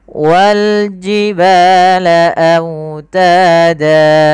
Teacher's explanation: pada lafal autada lafal wawnya lembutkan karena dia bacaan lin, sambil dimonyongkan sedikit bibir kita ke depan.